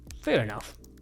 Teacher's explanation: fair is high and enough sounds low.